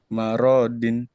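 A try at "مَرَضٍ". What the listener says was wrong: Nggak ada yang panjang, nggak ada yang panjang. Maurodin, Maurodin.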